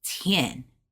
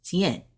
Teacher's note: To us, to me, it sounds like two syllables, tian, but it's one. And so trying to say tian as one syllable is hard.